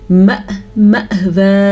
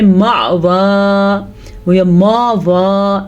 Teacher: الف کے اوپر حمزہ کے اوپر ساکن آنے کی وجہ سے جھٹکا پیدا ہوگا